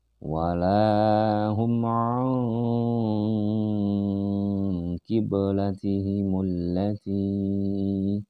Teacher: Walahum nun mati menghadapi qaf, maka dia disebut dengan ikhfa. Dan dia harus didengungkan di sini.